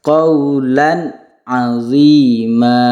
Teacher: tanwin bertemu dengan ain. Jadi harus dibaca jelas qawlan azima. Jadi jangan sampai kita membacanya dengan dengung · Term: idhar halqih